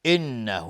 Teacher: نون مشدد دو حرکت غنه میدیم